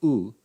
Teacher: to the high back unrounded vowel the labial are approximately is equivalent to the high back rounded vowel